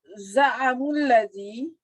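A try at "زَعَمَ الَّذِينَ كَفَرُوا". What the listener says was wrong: Jangan dibaca za'amu. Kalau gini pasti fi'il madi gini. Kalau pakai mu itu fi'il mudhari itu. Za'amal lazina.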